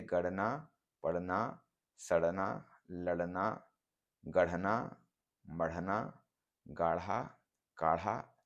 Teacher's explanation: बोली में इसकी जगह क्रमशः ड़ और ढ़ हो गए हैं यह ड़ तथा ढ भी दो स्वरों के बीच में पड़ने पर ही रहते हैं अन्यथा ड और ढ हो जाते हैं